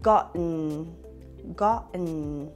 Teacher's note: Once your tongue is up for the stop T, you will then continue by making the N sound through your nose.